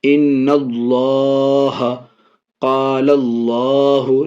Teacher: یہ اللہ کا لام اس سے پہلے نون میں زبر کی وجہ سے یہ اللہ کے لام کو پر یعنی موٹا پڑھ رہے ہیں